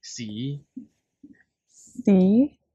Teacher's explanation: it goes from a very low position and then go to three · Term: low rising